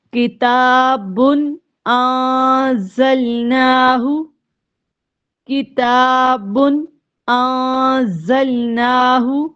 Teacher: با کے اوپر دو پیش ہے، ان کے بعد حمزہ آ گیا ہے تو یہاں پر غنہ نہیں کریں گے بلکہ اظہار کریں گے